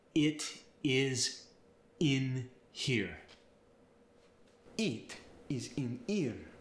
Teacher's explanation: For a word like it, in Italian, it's going to get the E sound.